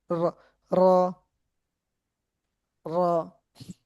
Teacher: জিহ্বার আগার উল্টা পিঠ তার বরাবর উপরের তালুর সঙ্গে লাগাইয়া উচ্চারিত হয় র।